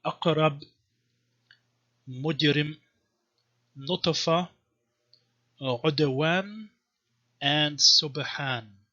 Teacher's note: One thing is called qalqala, which means that the sukun is realized as some kind of schwa sound